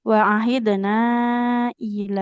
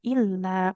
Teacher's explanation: Lamnya tidak bertasid, jangan menambahkan tasdid ya. Wa ahidna ila, nah bukan illa karena nggak ada tanda tasdidnya.